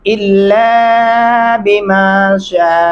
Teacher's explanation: لام کے اندر الف ہے، آواز کو لمبا کرنا ہے اور 4 الفی مدہ ہے شین کے اوپر.